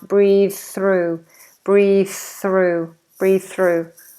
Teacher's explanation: what you would do with those two th's th ending a word and th starting a word is make it one sound